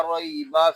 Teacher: را کو ہم پر پڑھیں گے، کیونکہ را کے اوپر زبر آ گیا ہے، اور یہاں پہ یا لین بھی ہو رہا ہے کہ یا ساکن سے پہلے زبر آ گیا ہے، لہذا حرف لین کو بغیر کھینچے بغیر جٹکا دیے نرمی سے معروف پڑھتے ہیں